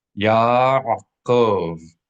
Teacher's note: Many people mistakenly pronounce this name, Jacob, as Yaakov, because in English it's Jacob, two syllables, but in Hebrew it is not just the name Jacob with the Y replacing the J. Rather, it has an entirely additional syllable that is absent from the typical English pronunciation